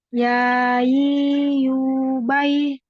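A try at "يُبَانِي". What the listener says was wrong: Oke.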